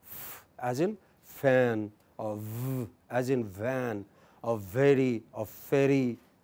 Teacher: We have speech sounds produced from the lips, like pa, pa, ba, or bit, or through interaction between lower lip and upper teeth, such as when we say f as in fan, or v as in van, or very, or ferry, okay, is the lower lip which touches the upper teeth.